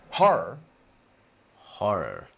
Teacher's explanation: you don't hear two separate RS with a vowel between them what you hear is a kind of long R sound